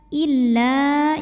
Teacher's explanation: Illa jika kita berhenti di la, ini hukumnya adalah mad tabi'i sebab ada alif didahului baris fathah. Dibaca panjang 2 harokat kalau berhenti. Tapi jika disambung atau diteruskan, maka alifnya ini gugur, huruf madnya ini gugur.